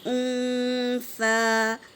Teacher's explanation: سا جب ادا کرے تو دونوں دانتوں کے بیچ میں زبان کی ٹپس ڈالیں گے، یہاں سا کا مخرج ہے